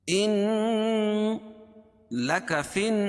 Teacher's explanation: ان لک فی النہار سبحا طویلا۔ ان نون مشدد میں غنہ ہوتا ہے، اس کو ناک میں آواز کو لے جائیں گے۔ ان لک فی اور یہاں بھی غنہ ہے۔